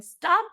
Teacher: in the Miami dialect, they'll add like a schwa at the end of everything.